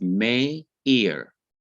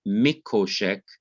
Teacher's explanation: And so the I under the M in min has to be lengthened to sire. The hirik, the short hirik, has to be lengthened to the long vowel sire.